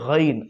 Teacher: آخری حلق جو بالکل جڑ زبان کے نیچے والا حصہ ہے یہ آخری حلق، وہاں سے غین ادا ہوتا ہے